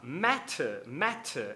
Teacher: Matter, justamente porque o T, o som do T, na escrita a gente tem dois T's, né? Mas na fala é só um T, está entre duas vogais, das quais a segunda é átona.